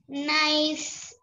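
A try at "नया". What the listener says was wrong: Naya. Nay, it is not sa, it is ya. Naya.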